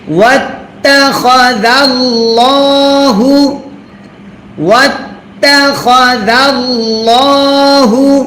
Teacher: তারপর ওয়াও তা জবর ওয়াত, তা জবর তা, ওয়াত তা, খ জবর খ, জাল লাম জবর জাল, ওয়াত্তাখাযাউ, ওয়াত্তাখাযাউ, লাম খারা জবর ল। আল্লাহ শব্দের লামের ডাইনে জবর যদি হয়, আল্লাহ শব্দের লাম তখন মোটা করে পড়তে হয়।